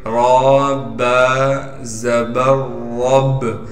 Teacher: با سے اس لیے ملائیں گے کہ با پر تشدید ہے، تشدید ہونے کی وجہ سے تھوڑا ٹھہراؤ رکھیں گے۔ · را کو موٹا کر کے پڑھیں گے اس لیے کہ را پر زبر ہے، اور پھر را کو ہم آگے با سے ملا دیں گے، را با زبر رب۔